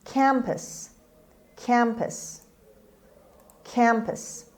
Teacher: Campus. The stress is on the first syllable, is on k sound. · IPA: /ˈkæmpəs/